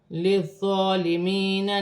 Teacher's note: یا ساکن سے پہلے زیر ہے، یا مدہ بنے گی، 1 الف کی مقدار کھینچ کر پڑھا جائے گا ، الف سے پہلے زبر ہے، الف مدہ بن رہی ہے،